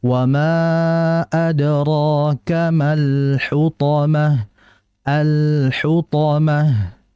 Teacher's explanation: Jadi, al-nya dibaca tawas karena huruf lam bersifat tawas, enggak terlalu lama alirannya dan tidak terlalu cepat juga. Sehingga dibaca wama adrakamal hutomah alhutomah.